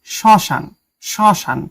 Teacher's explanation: পদের প্রথমে ম ফলা থাকলে সে বর্ণের উচ্চারণ কিছুটা ঝোঁক পড়ে এবং সামান্য নাসিক্য স্বর হয় মানে কিছুটা নাকে বাজে। যেমন শ্মশান আসলে এটার উচ্চারণটা এরকম হবে শ্মশান।